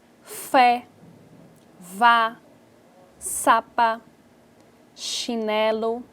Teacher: do português onde o som é produzido na via local e é liberado de forma de fricção então é como se o ar fosse soprado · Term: fricativa